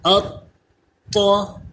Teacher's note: ات طا یہ مشدد کا قلقلہ کہلاتا ہے۔ ات طا تھوڑا جماؤ کے ساتھ اس کو ادا کریں گے اور دیر لگائیں گے، اور اس کے ساتھ ساتھ یہ حروف مستعلیہ بھی ہے تو پر بھی پڑھیں گے۔